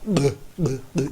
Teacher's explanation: You almost have to swallow it back again. When you say buh, your lips come together and bubble apart. Same thing back here, buh, but you've almost got to do it backwards.